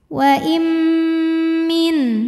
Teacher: nun sukun menghadapi mim maka nunnya lebur ke mim waim sambil didengungkan tahan bunyi m-nya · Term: idgam bunah